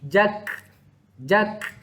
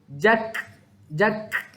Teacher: Keluar angin sedikit bila mana kaf mati. Sahabat Quran, saya nak tegaskan dekat sini, jangan qalqalahkan kaf.